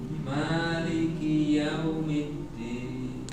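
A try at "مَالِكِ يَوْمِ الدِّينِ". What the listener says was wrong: Yau, jangan langsung yaumi. Sedikit manjang sedikit Pak.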